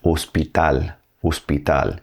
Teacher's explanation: H doesn't have any sound in Spanish. It is silent.